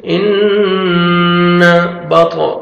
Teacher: نون مشدد ہے، غنہ کریں گے، نوز میں ساؤنڈ لے کے جائیں گے